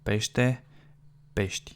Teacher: You kind of barely hear it, that e.